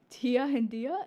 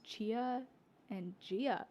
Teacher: changes the t sound to a ch sound like in church and a d sound to a j sound that in judge for example in Portugal.